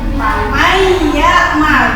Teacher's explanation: Jadi dimasukkan ya. Dimasukkan nun matinya ke dalam ya.